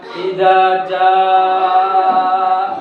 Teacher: ini mad wajib muttasil harus dibaca panjang 3 alif 6 harokat idza jaa. Nah, karena apa ada huruf hamzah setelah bacaan mad.